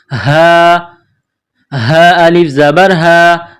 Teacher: یہ گول ہا ہے چشمے والی، صرف منہ سے ہوا نکالنے کی طرح اس کو پڑھتے ہیں